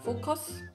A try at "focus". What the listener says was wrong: cos, cos라고 했지. focus, cos, cos, cos. 해야 돼. 읽는 대로 말하는 건 없어. 읽는 대로 발음하지 않아. 그래서 그 두 번째는 cos. focus, focus, cos, focus라고 했잖아. cos 약간 강조 너무 많이 하는 것 같아. 그러니까 강조는 영어로 그 for에서 들어가야 돼.